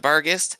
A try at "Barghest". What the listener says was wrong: I've always said like Barghast. I think the difference between how we're pronouncing is I say gassed, and you seem to say gas.